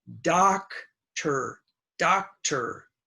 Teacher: Most students will say dokta, but it is not do, it's da. That's the short A.